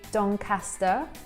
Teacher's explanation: they don't pronounce this long R sound like I do